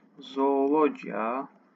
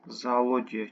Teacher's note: Avropa məşəli sözlərdə qoşa o saiti olur ki, biri uzun tələffüz olunur, biri düşür